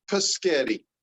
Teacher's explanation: That would be metathesis. They're changing those words or those sounds around.